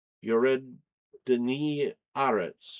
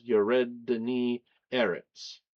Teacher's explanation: it was easier to say with an ah instead of an eh there